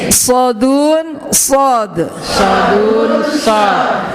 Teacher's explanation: Sod, ujung lidah dirapatkan dengan gigi seri bawah kiri kanan.